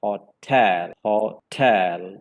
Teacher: For example, in the word hotel, you can divide that word into two syllables, and the second syllable should be spoken more prominently compared to the first syllable. So it is like hotel. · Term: word accent